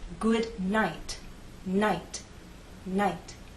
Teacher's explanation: there is a puff of air, but it's very weak. It's not as strong as the puff of air at the beginning of the word.